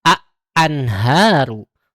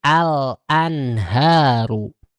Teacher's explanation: maka si alif lamnya atau lam ta'rifnya dibaca dengan jelas, tidak dileburkan pada huruf berikutnya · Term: alif lam qamari